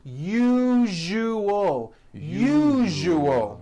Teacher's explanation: second syllable the one with the underline needs to be voiced put your hand on your throat and feel for the vibration in the second syllable